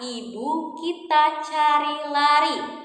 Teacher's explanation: selanjutnya kita punya bunyi vokal I tinggi, atas, depan. Contohnya pada kata ibu kita cari lari.